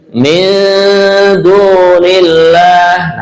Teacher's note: namanya ikhfa, nun mati berjumpa dengan dal